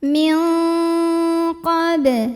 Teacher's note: Maka nun sukun dibunyikan samar-samar menuju qaf disertai dengungan. Jadi ini dengungnya gede ya karena huruf qaf itu makhrajnya jauh dari nun. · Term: ikhfa ab'ad